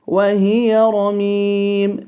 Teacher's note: The ra holding a fatha will be full.